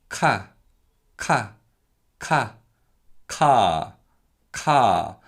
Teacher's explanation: So as you try to say the K sound, ka, ka, ka, ka, ka, the vocal cords stay open and they don't vibrate. But what you do feel in your throat is a buildup of air, which is then expelled as you produce the sound. And this is what we call aspiration, and we'll talk more about this a little later.